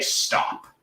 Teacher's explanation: the s is this sort of like not super loud, sort of low sort of hiss. We call it a fricative in linguistics.